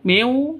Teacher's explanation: Non mati bertemu dengan wawu. Cara bacanya masuk ke wawu, ya, masuk ke wawu. Miu seperti itu, disertai dengung, ya, disertai dengung. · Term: idgham bi gunnah